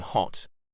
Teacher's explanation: H voiceless glottal transition